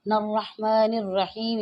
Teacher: ہا کو اپنے صحیح سے ادا کرنا ہے حلق سے